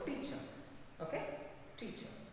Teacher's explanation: extra force is used in first syllable in the word teacher